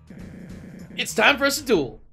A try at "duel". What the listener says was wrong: No, you pronounced it with a UA sound instead of a OO sound. Dual, duel.